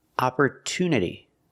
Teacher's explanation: That's right, we don't pronounce it opportunity. The TU is not pronounced with the ch sound. It's pronounced with a T sound.